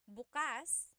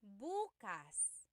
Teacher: If you say bukas the emphasis is on the second syllable that means open. If you say buas emphasis is on the first syllable that means tomorrow.